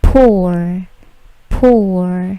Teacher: Bunyi P plosifnya tidak terlalu besar, bukan pour, tetapi pour, pour, menuangkan.